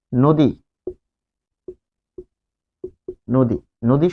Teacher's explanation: স্বরে অ হবে ও এর মতো উচ্চারণ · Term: আদ্য অ